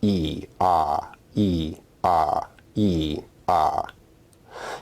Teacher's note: the vowel for example consider the vowel sounds E and A if you say both of these vowels in succession you should feel your tongue going up and down